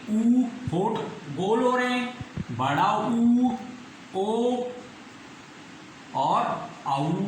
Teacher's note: इसमें होठों का आकार गोल हो जाता है तो यह है वृत्ताकार स्वर।